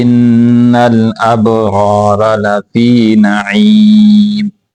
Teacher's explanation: دونوں را کو موٹا کر کے پڑھیں گے اور پہلے والا جو را ہے اس کو لمبا کریں گے